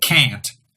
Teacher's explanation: You can tell that the air is coming out of your nose because of what happens when you pinch your nose. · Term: nasal vowel